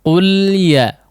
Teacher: Maka huruf lam tidak memantul ya. Qul ya ya. Di antara sebab terjadinya pantulan pada huruf lam adalah terlalu terburu-buru melepaskan ujung lidahnya ya dari gusinya ya.